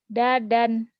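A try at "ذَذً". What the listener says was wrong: Zazan. Zazan bukan dadan ya. Ada titiknya. Zazan.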